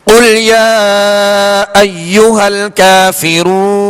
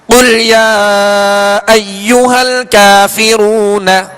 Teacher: کافرون نون پر زبر ہے، جب وقف کیا تو کیا ہم نے ساکن کر دیا، یہ سکون عارضی کہلاتا ہے.